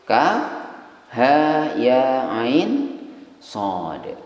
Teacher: Kaf 6 ketukan. Ha 2 ketukan. Ya 2 ketukan. Ain 6 ketukan. Shad 6 ketukan.